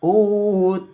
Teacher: didengungkan membacanya dua ketukan, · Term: idgham mimi